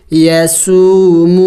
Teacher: یا زبر یا سین واو پیش سو میم واو پیش مو. यसूमू, दोनों वाव मद्दा है, लंबा करना है एक अलिफ के मकदार